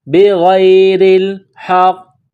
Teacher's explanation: موٹا کرنا ہے، غین کو یا کے ساتھ پلس کرنا ہے، را کے نیچے زیر ہے، را کو باریک کرنا ہے ، را کو لاف کے ساتھ ملانا ہے، را کو لام